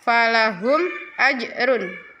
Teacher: Ada mim sukun bertemu dengan alif itu bacaan izhar syafawi jelas